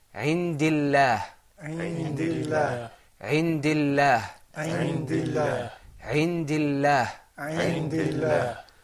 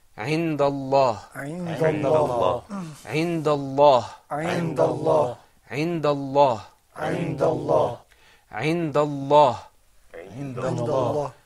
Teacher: Indallah, that lam is mufakham.